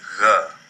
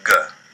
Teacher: Without the dagesh, gimel sounds like a soft g (gh), and with the dagesh it sounds like the g we're used to in English (g)